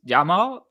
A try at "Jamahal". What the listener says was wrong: Got to pronounce the H.